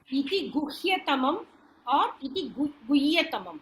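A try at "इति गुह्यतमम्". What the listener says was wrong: Has to be spelled out half. Has to be, you have to, it is Guñjan, it is not Guyya. Ha and ya.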